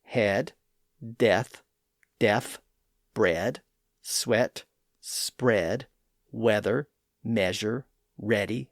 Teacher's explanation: Those words retain an original e pronunciation. They just use a slightly shorter version of it.